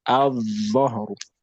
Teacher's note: So here you won't even try to pronounce the lam at all. Just go from the then the shedda al-dhahru.